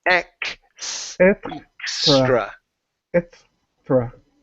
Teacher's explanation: So right now you're not pronouncing the K sound. So the X in English is pronounced with a K. Okay, so it's KS like that.